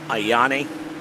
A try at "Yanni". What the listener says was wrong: That was okay. Still too many vowels. Ayani? No, it's just Yanni.